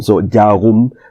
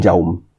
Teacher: So in Paiwan, the R sound disappeared. So it became, jarum became jaum.